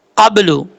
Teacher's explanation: قاف حروف مستعلیہ میں سے ہے، پر پڑھا جائے گا